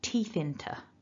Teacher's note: the TH jumps across to join, because there's a vowel at the beginning of into or inter, so teeth into.